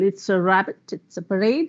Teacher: That's the right pronunciation, where R has to roll. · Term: rolling of the R